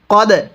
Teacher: এই দালের মধ্যে আমরা ধাক্কা দিয়ে পড়ব, কারণ দালটি হলো কলকলা হরফ। দালে যদি সাকিন হয় কলকলা করে পড়তে হয়।